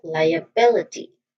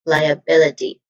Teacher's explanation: So it starts with lie, which has a diphthong sound I, and then a schwa sound and followed by bill, which has a short e sound, and then another schwa sound I, and then t, which also has a short e sound. Now this primary stress is on the third syllable bill. So we say it as liability.